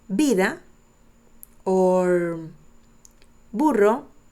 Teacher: in Latin America, people pronounce these two letters equally